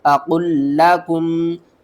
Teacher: قاف کو دوسرے لام کے ساتھ ملانا ہے، اس لام کے اوپر سختی بھی کریں گے